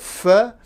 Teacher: I close my lips more or less so some air can still get out and you hear a lot of noise that noise is the sound of the F in this case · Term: fricatives